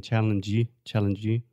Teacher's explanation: he's adding the extra e sound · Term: supporting vowel